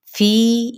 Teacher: فی یہاں پہ یا مدہ اور چار حرکت لمبا کریں گے